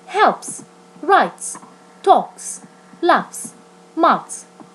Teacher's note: The S is pronounced S after the sounds P, T, K, F, Th.